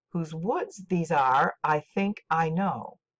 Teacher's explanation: most lines in Stopping by Woods have eight syllables with alternating unaccented and accented syllables